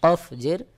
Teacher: কফ জের কই আওয়াজটা একটু শক্ত করে উচ্চারণ হবে